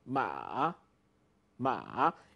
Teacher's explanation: You first have a falling part and then a rising part. Ma, ma. You could separate into 2.